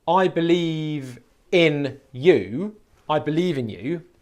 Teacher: if you're having real difficulty with it sometimes in linking speech the V sound the last sound of the word believe would actually move in pronunciation to be the first sound of the first syllable of the next word